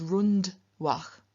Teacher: retroflex because it is followed by a dental dah and so it just remains a dental n in front of the dental da